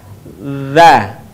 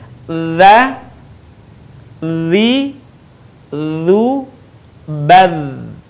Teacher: Suara mengalir dengan lembut tanpa diiringi dengan mengalirnya udara. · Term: huruf dha